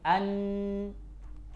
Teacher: keluar enggak suaranya dari mulut, dari lidah? Enggak keluar. Keluarnya dari mana? Dari hidung.